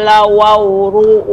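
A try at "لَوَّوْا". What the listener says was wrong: Tasydid pada waw. Lawaw. Nah, di sini ada tasydid pada waw. Tasydid yang pertama pada waw yang pertama. Jadi dibaca lawaw bukan lawaw.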